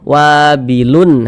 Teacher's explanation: Wabilun itu nun tambahan yang tampak ketika kita ucapkan, tapi dari segi penulisan mana ada? Nggak ada kan nunnya, tapi tampak ketika kita ucapkan begitu. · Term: tanwin